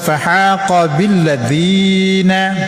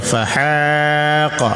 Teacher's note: dengan fa huruf bibir, kemudian ha huruf di tengah-tengah kerongkongan, yang dibaca fahaqa.